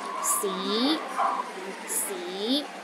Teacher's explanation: start with a low pitch and Rises to a high pitch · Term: second tone